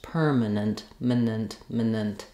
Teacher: I'm going as quickly as possible from the m to the n and to the next n. The consonants are more important in these syllables.